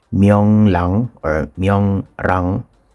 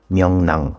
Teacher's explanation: So, instead of reading it as myong lang or myong rang, okay, yung natural pronunciation niya is myong nang. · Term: consonant assimilation rule